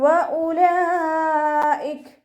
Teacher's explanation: മദ് വാജിബ് മുത്തസിൽ 4 or 5 count നിർബന്ധമായിട്ട് നീട്ടിക്കൊടുക്കുക